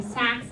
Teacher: there's a northern cities vowel shift happening in the Midwest where, again, you say sax instead of socks